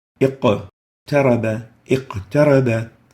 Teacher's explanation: because it's in the middle, it's the lowest level of qalqala.